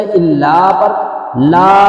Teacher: الا، یہاں پہ مد منفصل ہے، الا پر لا، آگے حمزہ ہے مد منفصل دو الف کھینچیں گے